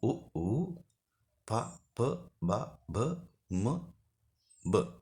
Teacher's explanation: තොල් ඇසුරින් උපදින අකුරු ඕෂ්ඨජ අක්ෂර බවට පත් වෙනවා